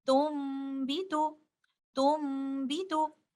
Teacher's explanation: But in the case of iqlab, we change letter noon sakina into letter meme.